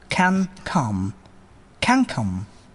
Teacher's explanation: the last sound of the first word, that is n, will be pronounced as ing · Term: ing sound